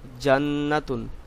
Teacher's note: নুনের উপর কিন্তু তাসদিদ আছে আপনাকে গুন্না করে পড়তে হবে